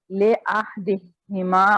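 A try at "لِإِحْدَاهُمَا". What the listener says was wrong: لی ہے, یہ لے نہیں ہے, لی احدہما,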